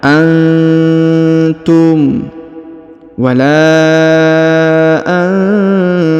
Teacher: Huruf nun sukun bertemu ta maka dibaca dengung dan disamarkan, didengungkan dan disamarkan.